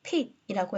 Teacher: 단어에서 음절의 첫 번째로이 파열음이 위치했을 때 우리가 pat이라고 해서 자 p 사운드를 좀 이렇게 소리가 터지듯이 발음하지 않습니까